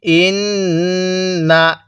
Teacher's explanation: পৌঁছে যায় এরপরে হামজা নুন জের ইন্ নুন জবর না ইন্না এই নুনের মধ্যে আমরা নাকের বাঁশি দ্বারা গুনাহ করব